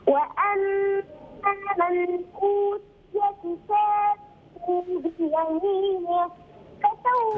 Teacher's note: النون هنا بعدها همزة، الحكم إظهار